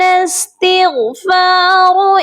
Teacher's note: یہاں غین کو بھی موٹا کر کے پڑھیں گے اور را کو بھی موٹا کر کے پڑھیں گے